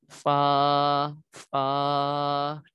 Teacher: دانتوں کے کنارے اور نیچلے ہونٹ کے تر حصے سے ادا ہوتا ہے۔